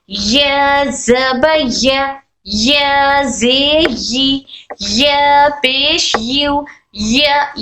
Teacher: ہمارے زبان کا درمیانی حصہ اور تالو کے درمیانی حصے سے، یعنی زبان کے درمیانی حصے کو تالو کے درمیانی حصے سے لگاتے ہیں، تب حرف یا غیر مدہ کی آواز نکلتی ہے. حرف یا غیر مدہ کی آواز نکلتی ہے، جیسے یا زبان کا درمیانی اوپر تالو کے درمیانی حصے کو ٹچ ہو کر حرف یا کی آواز نکلتی ہے.